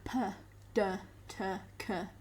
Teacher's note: there's a complete blockage of your mouth cavities no air is coming out of your mouth or nose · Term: plosive